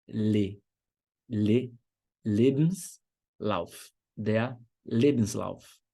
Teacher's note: Sílaba tônica é a primeira, e fica em cima do primeiro E.